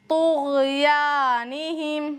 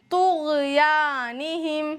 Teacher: طا کو پر نہیں کیا تو پھر یہ والا تا بن جائے گا، اس کی آواز ہوگی طُغْيَانِهِمْ۔